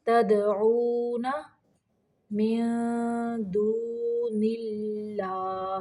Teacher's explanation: تد دال کو قلقلہ کرنا ہے، تدعون من دون اللہ، یہاں پہ اللہ کا لام باریک پڑھیں گے، من دون اللہ۔